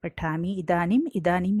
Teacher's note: जैसे कि आपको इस उदाहरण में दिख रहा है पठामी अधिक इदानीम। पठामी में ह्रस्व ई है और इदानीम में भी ह्रस्व ई है